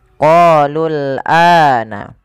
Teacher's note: pada lafal ana, a-nya dipanjangkan 2 harakat. Adanya alif jadi setelah huruf hamzah ini menandakan bahwasanya ia dibaca dengan mad badal. · Pada lafal qalul ini qa panjangkan 2 harakat karena ia mad tabi'i. Kemudian lul ini tidak boleh dipanjangkan karena waw alifnya dianggap tidak ada, langsung ke huruf lam yang disukunkan